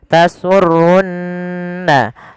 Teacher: Ada Mad thii panjangnya dua harakat tunirin pada lafal di sini ada Nun berharakat tasdid maka ia kita baca dengan bacaan gunah ditahan suara nunnya